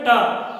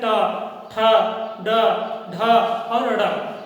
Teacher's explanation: जब भी आप बोलेंगे ट, तो जहां तालु है, तालु के थोड़ा सा ऊपर, ठीक, जीभ वहीं पर छूती है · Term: मूर्धन्य व्यंजन